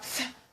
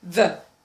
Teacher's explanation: We have th as in voiceless and the as voiced.